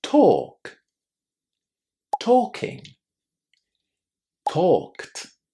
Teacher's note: It also contains a silent L and it's pronounced with a long O.